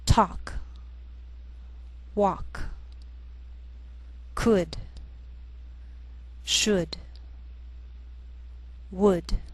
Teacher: sometimes L can be silent